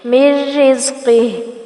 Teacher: وَكُلُوا مِن رِزْقِهِ، وَكُلُوا مد اصلی بالواو، مِن رِزْقِهِ ادغام بغیر الغنہ، یعنی میم کو را کے ساتھ جوڑیں گے لیکن یہاں پر غنہ نہیں ہوگا، نون کی آواز سکپ ہو جائے گی۔